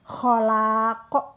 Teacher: Kholaq harus bunyi ko karena memantul besar. Pantulannya besar karena di akhir kata. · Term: qalqalah